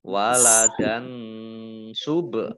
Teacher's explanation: Kemudian waladan subhanah. Nah, fathah tanwin bertemu dengan huruf sin, bacaan ikhfa, dibaca samar-samar